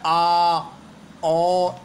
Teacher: विवृत स्वर में उच्चारण में मुख द्वार पूरा खुला रहता है वि व्रत यानी वृत के आकार का हो जाता पूरा खुल